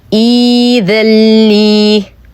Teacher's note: سنبتدئها بالكسر فتصبح إي، وسنحذف همزة القطع التي بعدها ونبدلها بماذا؟ بياء ساكنة فتصبح إي، يمد بمقدار حركتين لجميع القراء. إذن سنقول عند الابتداء إيذلي، إيذلي.